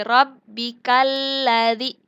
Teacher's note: lam bertasdid ini namanya adalah alif lam syamsiyah dan dibacanya itu dimasukkan. Jadi rabbikalladzi.